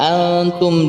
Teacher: Ada antum di situ, nun sukun bertemu dengan ta, yakni ikhfa hakiki, yakni kita membaca nunnya dengan cara disamar-samarkan